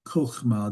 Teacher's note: the accent is on the last syllable. The first syllable is closed, unaccented.